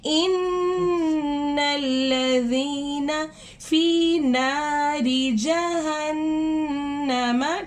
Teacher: ہم نے نون کی آواز کو ناک میں لے کے جا کے تھوڑا سا گنگنانا ہے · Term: غنہ